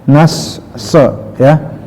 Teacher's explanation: Jadi kenapa ya bukan manyun tapi terangkat ya sidahnya, karena si so ini memiliki sifat istilah ya, naik terangkat. · Tip di surat An-Nasr ya, pertama di ayat yang ke-1 adalah idza ja'a nas ya, bukan anas ya, bukan sin tapi so, jadi nas bukan meringis, bukan senyum tapi agak sedikit manyun, tapi tidak tuh manyun teing ya, nas so ya, itu karena so ya, ada sifat istilah ya.